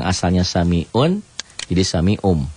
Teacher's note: bunyi nun mati berubah menjadi mim mati n-nya menjadi m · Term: nun mati menjadi mim mati